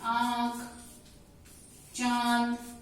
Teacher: इन शब्दों का उच्चारण करते हैं तो मुंह के साथ साथ नासिका मतलब नाक का भी प्रयोग करते हैं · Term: अनुनासिक